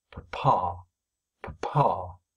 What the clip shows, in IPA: p.pha